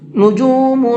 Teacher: نجوم، یہاں یہ نون ساکن ہے اور اس کے بعد میں کاف ہے، تو اس نون کے اندر اخفا کر کے پڑھیں گے